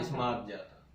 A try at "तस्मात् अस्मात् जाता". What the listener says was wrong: सा को तो खाए गए आप। सा को उच्चारण तो निकला ही नहीं आपके मुंह से। तस्मा से जब आ जाता, तस्मा तस म जाता। तस्मा तस, ये तो अगर यहाँ होगा तब आएगा।